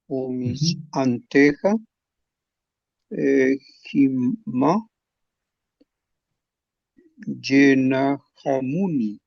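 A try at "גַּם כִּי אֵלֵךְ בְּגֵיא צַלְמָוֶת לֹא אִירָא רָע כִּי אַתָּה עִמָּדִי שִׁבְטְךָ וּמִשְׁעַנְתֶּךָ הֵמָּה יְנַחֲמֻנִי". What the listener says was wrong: Muy bien leído.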